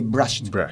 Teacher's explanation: when it comes after voiceless sound like p, k, f, s, or sh, we pronounce it t. Example: to brush, we say brushed.